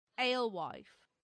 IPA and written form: ˈeɪlˌwaɪf (alewife)